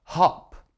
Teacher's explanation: hop that's short vowel o the ah sound